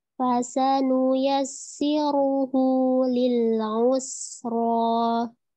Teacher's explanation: Sinnya enggak boleh tebal, alirkan dulu tipis. Usra sama kayak tujuh.